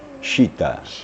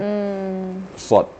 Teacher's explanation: Shin itu makhrajnya di antara ee lidah dengan langit-langit syin syitaita tapi kalau Shad itu bahagian depan jadi mendekati Sin